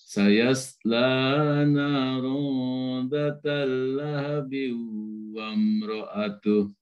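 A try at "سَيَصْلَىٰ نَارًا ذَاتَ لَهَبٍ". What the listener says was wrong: Ulang lagi. Sayasla narun dhata-nya panjang. Catatannya datalahab. Tidak datalahab. Tidak tersambung ke lam. Datalahab. Sayasla narun datalahab. Tidak datalahab, tidak tersambung.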